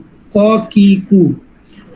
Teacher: জিব্বার গোড়া উপরে তালুর সঙ্গে লাগে 2 নক্তাওয়ালা ক